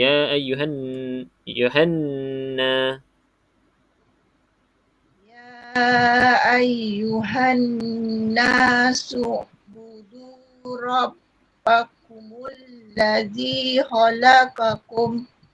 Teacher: Pastikan nun ni cukupkan 2 harakat ni. Wajibul gunnah ni.